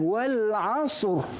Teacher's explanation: Maka kalau kita wakafkan huruf ra ini, maka dibaca dengan Tebal. tak boleh jadi nipis.